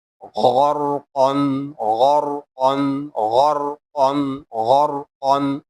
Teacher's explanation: Next, ghain and qab both are heavy letter, and we will also read ra heavy because the letter before it has fatha sign